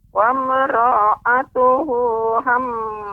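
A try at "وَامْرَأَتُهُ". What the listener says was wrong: ro-nya tidak panjang ro-nya pendek. Wa mara'atuhu. Silahkan diulangi.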